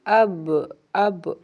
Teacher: با دونوں ہونٹوں کے گیلے حصے سے اب اب، اور میم دونوں ہونٹوں کے خشک حصے سے اطباق شفتین یعنی خشک حصہ، اطباق شفتین۔